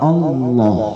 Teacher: Itu penyebutan Allahnya tebal. Disebabkan karena didahului oleh baris di atas A. Alif barisnya fathah A, Allah. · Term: Allah yang tebal